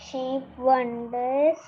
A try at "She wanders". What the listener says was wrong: She wanders, not wonders. Wanders.